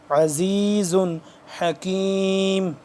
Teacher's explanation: زا دو پہ زن تنوین ہے لیکن اس کے بعد ہا حروف ہلکی میں سے ہے تو اس لیے ہم یہاں پہ اس پہ غنہ نہیں کریں گے